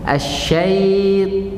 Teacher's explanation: Huruf ta tebal. Waktu kita masuk huruf ta, pangkal lidah naik. Asyaitan. Bukan asyaitan.